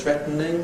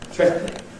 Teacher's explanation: It starts off as 3 syllables, threatening, but it can be compressed to 2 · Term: compression